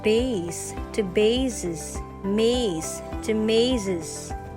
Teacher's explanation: When a singular possessive noun ends in s or z, it still takes the apostrophe s. The pronunciation of the apostrophe s just changes from the s sound to the z sound.